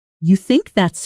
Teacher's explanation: Listen to this sentence with rising intonation at the end, like a genuine question.